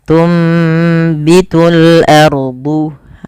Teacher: suara nunnya dirubah dan diganti, dibalikkan menjadi suara huruf mim. Maka awalnya tunbitu dan ditandai di sini dengan mim kecil agar mim kecilnya mengganti posisi nun. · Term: iqlab